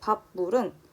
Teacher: 비읍이 뒤에 있는 미음의 영향을 받아서 미음으로 발음이 나고 있답니다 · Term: 비음화